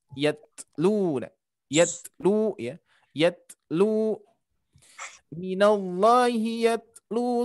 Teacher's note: ta termasuk dia hurufnya siddah, akan tetapi ketika disukunkan dia mempunyai sifat atau sisa huruf, ya, yang disebut hamas